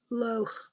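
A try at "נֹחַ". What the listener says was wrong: I think that's a nun. No, Noach. So it's a nun with a dot for the O. So it's Noach.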